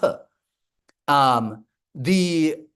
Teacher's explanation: Voiceless means that the vocal fold doesn't vibrate when you pronounce the sound p